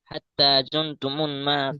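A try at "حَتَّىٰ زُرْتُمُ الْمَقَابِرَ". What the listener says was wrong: জুন, জুন নয় এখানে, নুন নেই, র আছে, জুর, জুর, জা র পেশ জুর, মুল, হাত্তা জুরতুমুল মাকাবির,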